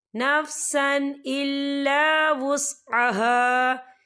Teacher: غفرانک ربنا وإلیک المصیر لا یکلف اللہ نفسا الا وسعها، یہ دیکھیں نفسا سین کے اوپر تنوین ہے اور تنوین کے بعد جو ہے حمزہ آ رہا ہے، حمزہ جو ہے حروف ہلکی کا ورڈ ہے تو ہم یہاں اظہار کریں گے اور ہم اسے بنا غننے کے پڑھیں گے